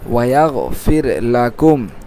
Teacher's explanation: এখানে কোনো মদ নেই, এই জন্য আমরা সব হরকতকে তাড়াতাড়ি উচ্চারণ করতেছি